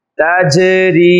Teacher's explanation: جیم میں قلقلہ کیا جا رہا ہے، جیم کو ظاہر کر کے پڑھا جا رہا ہے